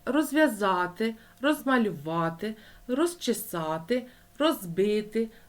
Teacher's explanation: у префіксах роз без вимовляється дзвінкий звук і пишеться буква з